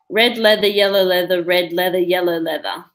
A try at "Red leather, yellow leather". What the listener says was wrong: That was good, but It's a bit slow.